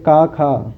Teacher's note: दोनों वर्ण का उच्चारण समान स्थान है, ठीक है। इसका जो उच्चारण स्थान है वो कंठ है और इनका जो प्रयत्न भी सामान्य है, ठीक है। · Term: सवर्ण